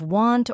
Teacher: If you don't say the T in want, it might sound like one.